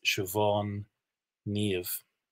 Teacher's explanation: They have BH, MH, they sound like V.